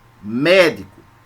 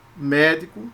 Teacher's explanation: Médico, só a primeira sílaba é forte, porque é uma palavra proparoxítona.